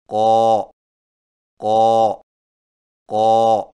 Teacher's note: قاف کی ادائیگی میں زبان کی جڑ کو کوے کے متصل تالو پر لگائیں، یعنی قو قو قو۔